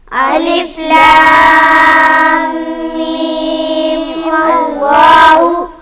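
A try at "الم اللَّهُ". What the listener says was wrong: ماللہ، جب ملائیں گے تو پھر ماللہ ہو جائے گا، الف نہیں پڑھا جائے گا، حمزہ جو ہے وہ وصلی ہے۔ الف لام میم اللہ۔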